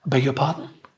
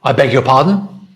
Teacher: And the voice goes up at the end.